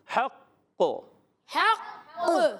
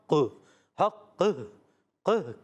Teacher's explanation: میں ہا حلق کے درمیان والے حصے سے ادا ہوتا ہے قاف حرف مستعلیہ میں سے ہے موٹا ادا کریں گے حرف قلقلہ میں سے بھی ہے